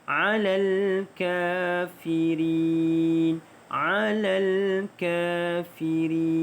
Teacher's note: Kita bunyikan alal ka, dibaca dengan panjang 2 harakat kafirin. Mad arid disukun, kita ambil 4 harakat.